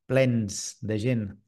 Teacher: aquesta S final de mot seria sorda, però com que està dins d'una frase que després la consonant que hi ha després és sonora, el que fa és sonoritzar la S i passa a ser una Z